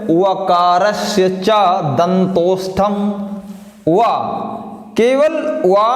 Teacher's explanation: व मात्र एक वर्ण है जिसका उच्चारण स्थान जो है वो दंतोष्ठ है, इसलिए हम इसे दंतोष्ठ वर्ण कहते हैं।